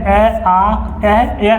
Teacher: कंठ स्वर जो होते हैं अ आ जो होते हैं कंठ से बोले जाते हैं